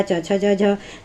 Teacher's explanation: फिर तालव्य हो गया च छ ज झ